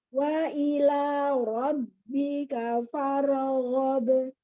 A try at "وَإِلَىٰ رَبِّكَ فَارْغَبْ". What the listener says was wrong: Nggak faragho, nggak ada pantulan di ro. Farghab.